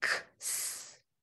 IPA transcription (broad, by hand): k s